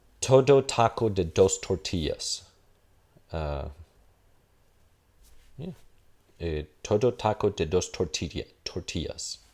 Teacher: Si yo lo pronuncio, digamos, con la fonología del inglés, sonará como, bueno, estas T's serán alveolares, las D's también, pero serán oclusivas en vez de fricativas